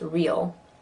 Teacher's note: Because of the L, it kind of has a diphthong effect. Real can sound like 2 syllables.